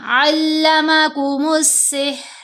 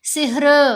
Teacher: सिहर ये नहीं करना, रा की आवाज़ हिलनी नहीं चाहिए, बिल्कुल साकिन होगी, ठहरी हुई आवाज़ है। क्योंकि साकिन जब पढ़े जाएंगे तो जो मैंने 5 हरूफ दिखाए ना कलकला वाले, सिर्फ उन्हीं की आवाज़ हिलेगी, बाकी बिल्कुल ठहरी हुई स्मूथ साउंड बनती है।